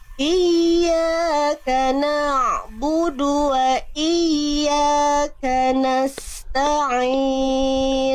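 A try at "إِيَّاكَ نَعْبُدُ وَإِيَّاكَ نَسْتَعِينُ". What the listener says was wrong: ainnya tinggal dilemahkan sedikit jadi Ain ainnya sudah bagus banget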